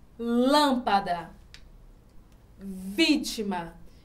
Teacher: a sílaba mais forte está na antepenúltima não está na última não está na penúltima está na antepenúltima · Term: proparoxítonas